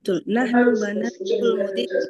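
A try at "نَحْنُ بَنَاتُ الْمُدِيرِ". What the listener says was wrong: ahsan.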